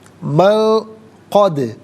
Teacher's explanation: سلط من قد، من میں نون ساکن ہے، اس کے بعد قد میں قاف حرف اخفا ہے تو نون ساکن کو یہاں پر اخفا کے ساتھ پڑھیں گے، یعنی ناک میں آواز لے جا کر گنگنانا، اس سے اخفا کہتے ہیں۔